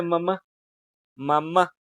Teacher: Es la última. Entonces, es la última sílaba la que suena más fuerte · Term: sílaba más fuerte